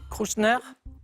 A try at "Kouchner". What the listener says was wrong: Kouchner. Il y a un petit R qui s'est glissé. a fourché.